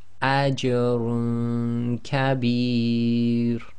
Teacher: Apply ikhfa, i.e. hiding the sound of the nun sakin in the dhammatain and trying to get ready for the next articulation point, or at least keeping your tongue away from the nun, the roof of your mouth.